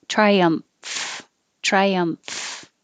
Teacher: That MF combination is unusual and kind of weird. So once your lips are closed for the M, triumph, then you open the top lip with your top teeth on your bottom lip and let air flow through